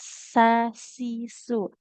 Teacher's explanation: Sin, ujung lidah menempel ke ujung gigi seri bawah.